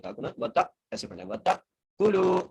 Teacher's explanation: جی اگلی ہے وَتَأْكُلُوا، واو زبر وا، تا کو حمزہ سے ملانا ہے اور جھٹکے سے پڑھنا ہے